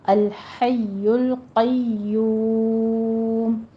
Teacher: قوف کو پر پڑھتے ہوئے آگے یا کی تشدید ادا کیجیے، دونوں ہونٹوں کو گول کر لینا ہے اور پھر مد عارض وقفی پیدا ہوگی کیونکہ واو مدہ کے بعد وقف ہو رہا ہے۔